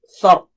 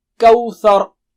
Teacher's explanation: Tha is thin and ra is thick.